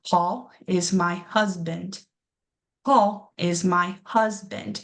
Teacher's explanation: We can hear the way our voices rise and just the way that we say huz just a little bit longer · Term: stressed